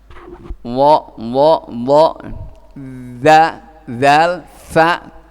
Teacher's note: semuanya dari ujung, ya. Ujung lidah dengan ujung gigi seri yang atas